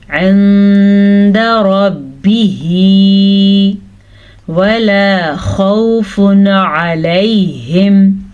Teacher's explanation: نون ساکن کے بعد دال حروف اخفا میں سے ہے تو ہم نے نون ساکن کو چھپے غنے کے ساتھ پڑھنا ہے